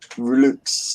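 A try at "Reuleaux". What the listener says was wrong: No, it's going to be a silent X in it for a guess, so it's rouleau.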